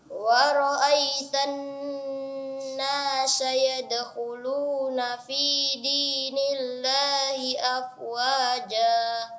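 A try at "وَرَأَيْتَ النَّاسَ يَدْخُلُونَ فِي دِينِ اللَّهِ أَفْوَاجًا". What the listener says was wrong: Iya, huruf sin ditipiskan dan tidak ada seperti huruf shin. Sa. Wa ra'aitan nasa yadkhuluna fi dinillahi afwaja.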